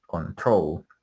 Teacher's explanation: pronunciation of control with the stress on the last syllable